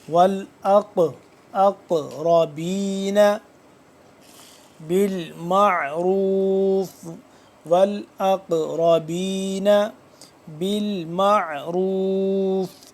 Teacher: پڑھیں گے، لیکن قاف حروف قلقلہ میں سے حرف ہے، تو قاف ساکن ہو رہا ہے، تو اس پہ جب ساکن ہوگا تو اس کو ہم قلقلہ کریں گے، یعنی کہ آواز کو پلٹائیں گے